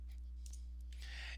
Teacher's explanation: we will go up on the word do because now the word do is more important